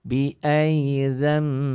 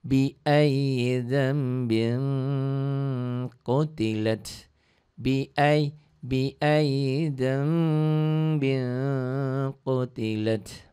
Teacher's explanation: Bunyi nun matinya, bunyi n-nya berubah menjadi m mati. Bi'ayyidham, ada eng sedikit. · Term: iklab